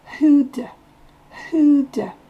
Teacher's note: Le do, ici on l'entend presque pas, il est presque de.